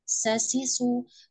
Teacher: Huruf sin. Sifat sofirnya jangan lupa di tunaikan, diperjelas ya